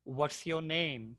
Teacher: So I'm hearing a really good long movement with the long A.